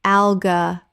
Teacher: Four syllables, the stress falls on the first syllable.